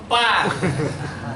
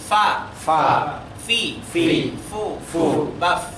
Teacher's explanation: Caranya bibir bawah itu menyentuhkan ke ujung gigi atas. Jadi ujung gigi atas itu menyentuh di bibir bawah.